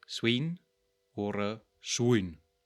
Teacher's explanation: we have a weakly diphthongal E, or a very strongly sound-shifted ui